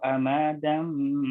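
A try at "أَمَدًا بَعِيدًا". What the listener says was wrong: Banyak jangan sampai dipanjangkan amadam, tapi langsung amadam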